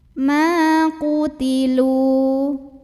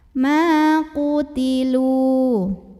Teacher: Kalau kita berhenti di sini hukumnya adalah mad tabi'i. Karena ada waw sukun yang didahului baris dhammah. Maka cara bacanya dipanjangkan 2 harokat.